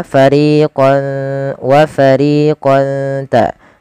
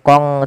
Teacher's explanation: ada bacaan ikhfa yaitu surah tanwinnya awalnya fariqon ketemu ta samarkan ke ta